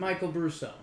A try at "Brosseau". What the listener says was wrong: There's no U. It's Brosseau. There's no U, though.